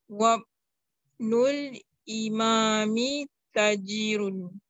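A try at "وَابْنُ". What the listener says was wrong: One, this I, sorry, this I It's not Kasra. It is Dhamma. The initial Dhamma. Like Tanween, you see, it is dropped. We only have one Dhamma.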